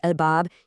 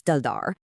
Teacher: On the other side, a sunletter word like dar becomes ddar. The l sound completely vanishes and the d gets doubled.